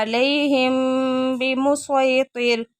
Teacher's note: میم ساکن کے بعد با متحرک آ گیا تو یہاں پہ بھی اخفا ہو رہا ہے۔